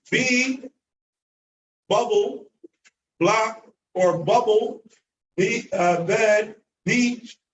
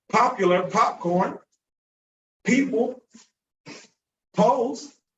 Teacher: it doesn't have any air being projected, the B. But the P, popular, popcorn, people, pose, has air, not like B